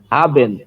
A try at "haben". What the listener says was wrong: হাবেন, ইয়া।